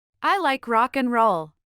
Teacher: escucharemos que el pronombre I. es pronunciado con cierto énfasis, a pesar de ser una palabra funcional.